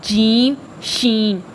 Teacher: درمیان زبان اور تالو سے جیم شین یہ نکلیں گے، یہ تھوڑا زور سے ادا ہوتے ہیں